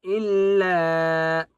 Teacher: 3 الف کی مقدار کھینچ کر پڑھیں گے لام کو